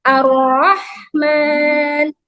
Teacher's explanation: Ro itu tafkhim ya, ro-nya ditebalkan.